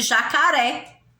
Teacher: A última sílaba é a mais forte.